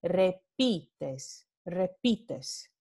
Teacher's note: pi es la sílaba tónica